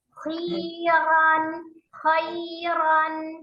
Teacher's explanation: Ya, jadi akhirnya letakkan makharijul huruf nun sukun di akhir. Ujung lidah bertemu dengan gusi atas. Dengan ro-nya tetap dibuka ketika dia fathah, tidak dimajukan bibirnya ya.